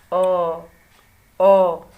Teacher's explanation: अगर ध्यान से इसको इस वर्ड को बोलिए और अपने जो मुख पे उस पर ध्यान दीजिए तो देखिए जो हमारा जीभ है न ऊपर को टच कर रहा है और ना ही नीचे को, बीच में स्थिर ऐसे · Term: मध्य स्वर